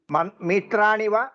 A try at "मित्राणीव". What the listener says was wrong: मित्राणीव दीर्घ